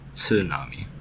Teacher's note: We always say this word like there's no T at the beginning, but in Japanese, I mean, you really pronounce the T. It's tsunami.